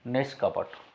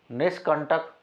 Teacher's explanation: विसर्ग का ये मूर्धन्य से हो जाता है